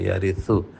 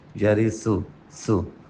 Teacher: سا پڑھتے ہوئے زبان باہر نکلے، یرثو. سا پڑھتے ہوئے یہ دھیان دیں کہ اس کو سا نہ پڑھیں.